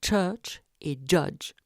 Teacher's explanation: au niveau postalvéolaire la succession occlusion frication donne les che et je de l'anglais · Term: afriqués